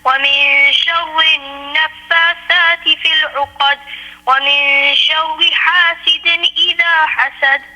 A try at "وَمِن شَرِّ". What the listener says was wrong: If you can pronounce the letter Ra, which is coming on the word Sharri, more lightly. وَمِن شَرِّ and not وَمِن شَرِّ. وَمِن شَرِّ.